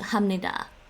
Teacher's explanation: When you're speaking very fast, it's a natural morphing of the P and the N to hamnida. So they don't say hapnida.